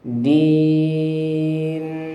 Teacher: maka cukup sekali saja dengungannya, jangan lama. Jadi contohnya ayat ini din, Nah, cukup sekali en en, nah gitu sekali saja, jangan din.